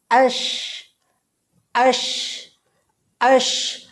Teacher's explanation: জিহ্বার মাঝখান আর তার বরাবর উপরের তালুর মাঝে একেবারে লেগে থাকবে না, কিঞ্চিত পরিমাণ ফাঁকা থাকবে। আশ আশ আশ, আবার বাতাসটি ছড়িয়ে পড়বে, এর ভিতরে তাফাসসির হরফ পাওয়া যাচ্ছে। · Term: শিন